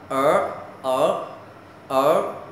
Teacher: er, uốn lưỡi lên, gọi là âm uốn lưỡi